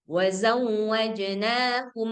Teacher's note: dirapatkan bibirnya ya seolah-olah kayak kita baca iqlab. Jadi enggak ada lagi suara samar-samar gitu ya. · Nah, jadi konon lagi kalau misalkan memang sudah mim ketemu ba, jadi ya baca aja yang yang sebagaimana tertulis gitu. Jadi ya dibaca aja mim sakinahnya secara jelas, hanya aja ditambah dengungnya. Jadi eh, cara membaca ini, contoh yang pertama ini dengan pendapat yang kedua itu dirapatkan bibirnya ya seolah-olah kayak kita baca iklab. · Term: ikhfa syafawi